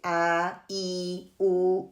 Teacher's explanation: یہ تینوں کے تینوں ساؤنڈ جو ہیں ایئر سے نکلتے ہیں، خالی اسپیس جو ایمٹی اسپیس ہے ماؤتھ میں وہاں سے ادا ہوتے ہیں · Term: حروف المدیہ